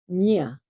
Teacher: to indicate the palatal nasal sound nya